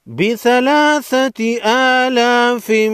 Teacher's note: بڑی مد کو 5 الف کے مقدار کھینچ کر پڑھیں گے۔